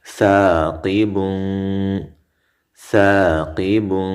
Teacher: ثا الف زبر ثا قاب زیر قی با دو پیش بن ثاقب. قاب غټ ویلې شو، دا حرف مده دی ښه الف مده